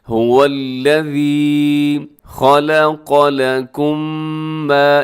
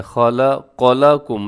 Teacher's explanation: هو الذی خلق لکم ما، یہاں پر کیا ہے، خا موٹا پڑھنا ہے، لام باریک ہے، پھر قاف پھر موٹا آ گیا، تو یعنی کہ آس پاس دونوں حروف موٹے ہیں لیکن درمیان میں جو لام ہے وہ باریک ہے